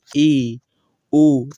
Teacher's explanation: अर्ध संवृत्त स्वर की बात करें तो मुख आधा बंद रहता है। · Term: अर्ध संवृत स्वर